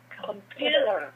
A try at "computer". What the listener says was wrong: Now, the first syllable is weak. So instead of saying calm, you have to say kum, kum. Very short, very weak, reduced, compressed the sound. Computer. Computer.